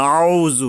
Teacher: এই আইনটাকে গলা চেপে, হলকের মাঝখান থেকে গলা চেপে আদায় করতে হবে।